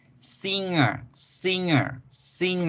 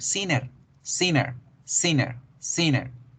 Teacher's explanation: la n se nos vuelve más nasal de lo normal